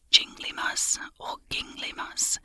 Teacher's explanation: with the stress on the first syllable